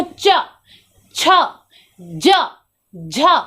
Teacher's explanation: जीभ आपका तालू को टच कर रहा है, ऊपर जाकर के टच कर रहा है